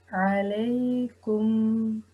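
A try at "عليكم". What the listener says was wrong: Very good, mashallah.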